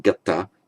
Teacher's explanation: just as gum loses its nasal, you don't say ganta but gata